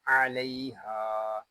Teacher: الف مدہ کو ایک الف تک کھینچ کر پڑھیں گے